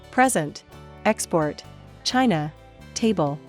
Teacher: Stress on first syllable. Most 2-syllable nouns.